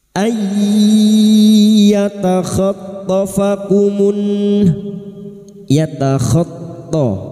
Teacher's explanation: masuk dengan mendengung masuk pada huruf ya dan mendengung selama tiga harakat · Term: idgam bigunah